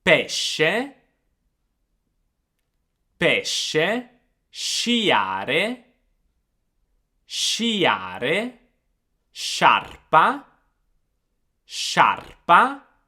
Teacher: SC in Italian can be pronounced in two different ways, with a soft sound and a hard sound. The soft sound is actually the same as the SH sound that you have in English.